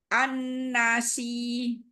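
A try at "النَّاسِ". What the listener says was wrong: An-nasi. Si jangan panjang. yang punya sifat rokhawah dialirkan lagi suaranya ya.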